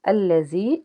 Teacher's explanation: یا ساکن سے پیچھے زیر ہے، ایک الف کے برابر کھینچ کے ادا کریں گے